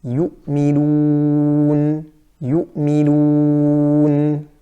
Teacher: In the waw maddiyah, for example, yu'minun, yu'minun. So with the waw, there should be no ghunnah, just like I read it.